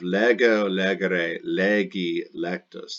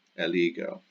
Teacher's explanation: the short E in lego, legere becomes an I when the prefix is added to it. Probably because the accent changes a little bit.